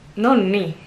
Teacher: the emphasis is on the last syllable and again I have a double consonant